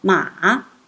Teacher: Third tone, the falling rising tone